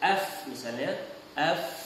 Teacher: huruf fa tersebut kalau kita pegang pada pita suara kita tidak akan rasa getaran. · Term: al-hams